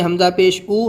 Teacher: جب ہم پیش کو بولتے ہیں حمزہ پیش او، تو ہمارے منہ سے آواز سامنے کی طرف جاتی ہے۔ جس طریقے سے زبر کی آواز اوپر جاتی ہے اور زیر کی آواز نیچے جاتی ہے، تو پیش کی آواز سامنے کو جاتی ہے، آگے کو جاتی ہے۔